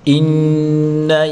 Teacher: إن نون مشدد ہمیشہ غنہ کے ساتھ پڑھیں گے